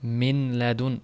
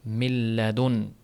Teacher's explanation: Nun harfi butunlay yo'qoladi. Min ladun emas, milladun.